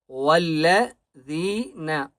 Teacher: واو کو لام کے ساتھ ملائیں گے اور مضبوطی کے ساتھ پڑھیں گے، اور زال کو ایک الف کی مقدار کھینچ کر پڑھیں گے، اور زال کو نرمی سے پڑھنا ہے